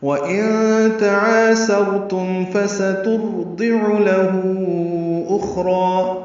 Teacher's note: نون ساکن کے بعد تا آنے کی وجہ سے اخفا ہے. وَإِن تعاسرتم الف مدہ ہے، را پر ہے، تم میں اظہار ہے.